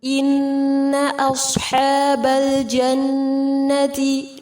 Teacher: نون مشدد پر غنہ کیا جائے گا، صاد کو پر کریں گے، حا وسط الحلق سے ادا کیا جائے گا، آگے لام لام قمریہ ہے.